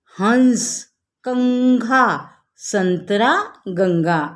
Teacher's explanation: जिन वर्णों पर अनुस्वर लगा रहता है, यानी कि ये ऊपर वाला बिंदु लगा रहता है, अंग की मात्रा, उनका उच्चारण करते समय गले से आने वाली हवा नाक के रास्ते से बाहर निकलती है।